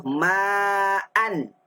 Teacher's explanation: kalau kita sambung bunyi an, tapi kalau kita wakaf hilang dah bunyi nunnya. Tidak ada ketika wakaf. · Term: tanwin